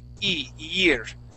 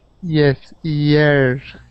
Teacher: instead of reading the word with a Y there at the beginning, you want to read it like if there was an I, a Spanish I there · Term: Y sound